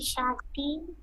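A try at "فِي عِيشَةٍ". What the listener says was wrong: সাতির। সা সাতির, হ্যাঁ স্পষ্ট বলতে হবে। ফি ঈশাতির। সাতির। র দিয়ে।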